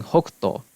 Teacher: why the japanese has a coup at the end is because middle chinese had that k which is preserved in cantonese